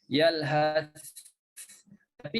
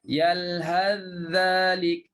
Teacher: kalau Hafs, kalau wasal langsung masuk dalam huruf dzal. Yalhadzalik, sa tak timbul langsung. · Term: idgham